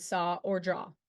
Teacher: sound like in the middle of the words cut or butt the vowel a w is produced with the tongue positioned at a mid height and back in the mouth with rounded lips it's located in the open midback position the a makes the